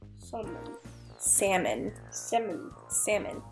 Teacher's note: it's funny how the word salmon you can't hear the L